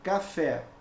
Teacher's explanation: a sílaba tônica é a última então o que que eu tenho aqui ela é uma oxítona